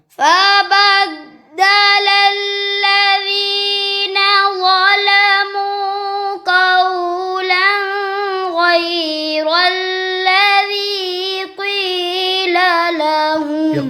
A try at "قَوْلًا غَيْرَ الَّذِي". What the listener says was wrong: कौलन पे गुन्ना क्यों कर दिया? गैन रुफिल किया आगे कौलन गैरल्लज़ी